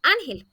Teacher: Y otro ejemplo, la palabra ángel. Esta palabra tiene su sílaba tónica en la penúltima sílaba y marcamos la tilde porque no termina ni en N, ni en S, ni en vocal.